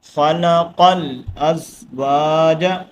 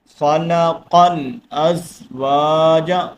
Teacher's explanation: قاف کو آگے لام کے ساتھ کنیکٹ کرنا ہے